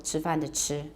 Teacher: So we don't have to open and close it. It's already open from the vowel, and it closes quickly for our final glottal stop.